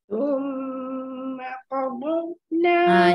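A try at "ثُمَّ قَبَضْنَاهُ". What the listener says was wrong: Jaga. Lagu betul dah. Cuma ba nipiskan.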